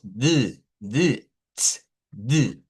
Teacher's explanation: sacar los sonidos en la posición alveolar, la lengua tiene que elevarse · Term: zona alveolar